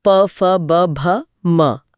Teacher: ऐसा इसलिए होता है क्योंकि होंठ फेफड़ों से आ रही हवा के लिए एक बैरियर या बांध का काम करते हैं। प या ब बोलते समय होंठ पहले पूरी तरह से बंद होकर हवा को रोकते हैं, दबाव बनाते हैं और फिर अचानक खुल जाते हैं जिससे एक स्फोट के साथ ध्वनि निकलती है। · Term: ओष्ठय ध्वनियां